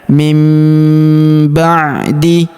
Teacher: Huruf nun sukun bertemu huruf ba. Maka nun sukunnya melebur ke huruf ba. Kita baca dengung dan kita tahan dengungnya 2 sampai 3 harakat. Nunnya berubah menjadi mim.